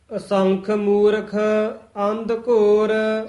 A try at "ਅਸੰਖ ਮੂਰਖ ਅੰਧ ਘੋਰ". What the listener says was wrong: ਅੰਧ ਦੱਦੇ ਨਾਲ ਨਹੀਂ ਬੋਲਣਾ, ਧੱਦੇ ਨਾਲ ਬੋਲਣਾ ਹੈ। ਅੰਧ ਅਸੰਖ ਮੂਰਖ ਅੰਧ ਘੋਰ।